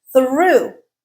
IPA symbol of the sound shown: uː